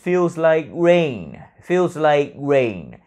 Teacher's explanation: tôi luôn luôn phát âm cái từ like, âm cuối đó là cái âm nghẹn ở cổ